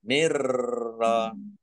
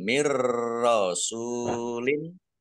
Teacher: Maksudnya masuk, nunnya tidak dibaca, langsung masuk ke huruf ro, tetapi tidak mendengung. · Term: idgham bila gunnah